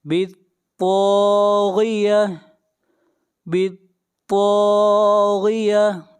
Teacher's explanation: طا کو موٹا پڑھیں گے، طا حروف مستعلیہ میں سے ہے، اور طا کو کھینچ کر پڑھیں گے 1 الف کے برابر، یہاں پر الف مدہ ہے۔